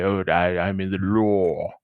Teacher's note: It's any English accent that's non-rhotic, and it's making law and lore rhyme.